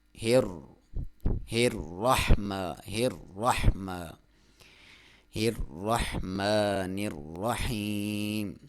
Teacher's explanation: یہاں پہ اس سے پہلے لفظ پہ زیر ہے جبکہ اس کے اوپر بھی زبر ہے اور شد بھی ہے، تو جہاں پہ شد ڈبلیو بنی ہوتی ہے، یہ ڈبلیو کی طرح کا نشان، تو اس لفظ کو 2 بار پڑھا جاتا ہے۔ تو پہلے لفظ کو آپ باریک پڑھیں گے کیونکہ اس سے پہلے لفظ پہ زیر ہے، اور دوسرے را کو آپ موٹا پڑھیں گے